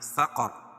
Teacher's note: را وقف اور وصل دونوں صورتوں میں پر ہوگی، کیوں کہ وقف کی صورت میں رائے ساکنہ سے پہلے زبر ہے، اور وقف کی وصل کی صورت میں را کے اوپر زبر رہے گی، دونوں صورت میں را پر پڑی جائے گی۔